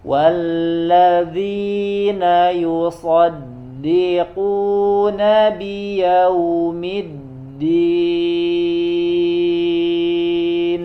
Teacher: Zu ya, ini nanti harus terlihat bagian hafahnya ya, sebagaimana sudah dijelaskan, karena yang menempel adalah bagian ujungnya dengan gigi, maka ketika mengucapkan huruf dzal ya, posisi muntahal hafah ya, atau ujung dari sisi lidahnya harus nampak terlihat di luar